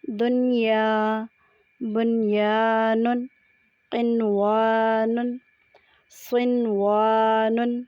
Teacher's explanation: تلفظ کی پہچان کرنے کے لیے ہم نے یہ دیکھنا ہے کہ نون کو الگ الگ ادا کیا جاتا ہے، ادغام یا غنہ نہیں کیا جاتا۔ پڑھتے وقت آواز میں نرمی، صفائی اور الگ پن سا محسوس ہوتا ہے۔ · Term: اظہار مطلق